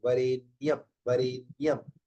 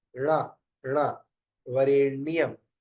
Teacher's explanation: कई लोग इस अणा को ना कह के बोल देते